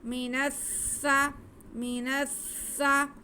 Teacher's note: تھوڑا رک کے نون کی آواز کو سین کے ساتھ ملائیں گے کیونکہ شد ادا اچھی طریقے سے ہو سکے اور سین میں سیٹی کی آواز بھی آئے گی.